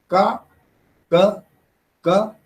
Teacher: So when I say ka, ka, ka, is it voiceless? There is no ghosha. There is no vibration.